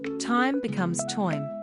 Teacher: Turn I into oi, for example, time becomes toim.